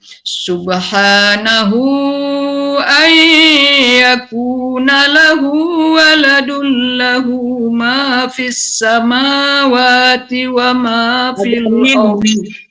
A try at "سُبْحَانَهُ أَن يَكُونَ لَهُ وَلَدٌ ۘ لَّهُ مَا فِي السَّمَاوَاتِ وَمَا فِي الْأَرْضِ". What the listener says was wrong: Harus berhenti betul.